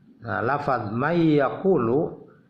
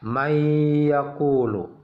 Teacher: nun mati masuk ke ianya ada dengung selama dua harokat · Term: Idgham Bighunnah